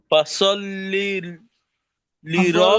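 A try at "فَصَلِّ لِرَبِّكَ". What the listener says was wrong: ফাসলিতে একটা শব্দ গেছে লি রব্বিক আর একটা শব্দ লি রব্বিকে সম্পূর্ণটা মিলাইলন বলেন লি রব্বি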